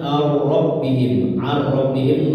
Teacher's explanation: Jadi ar ya, melebur ke roh ya. Nun sukunnya melebur ke roh. Ar, jadi nggak dibaca nunnya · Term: Idgham bila guna